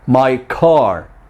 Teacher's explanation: In the words my and car, we are linking the vowel ya to the stop sound or stop consonant ka. So the ka sound in the linked words my car has a lot of puff of air.